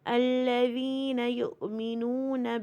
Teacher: واو ساکن سے پہلے پیش ہے تو 2 کاؤنٹ، واو بالمد ہے